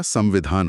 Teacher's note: हवा बाहर निकलती रहती है। इसलिए म की ध्वनि को मुंह के बजाय नाक के रास्ते से ही गूंजना पड़ता है। · अगर कोई संविधान में आधा म बोलने की कोशिश करे तो होठ बंद करने पड़ेंगे। जबकि व बोलने के लिए होठों को खुला रखना होता है।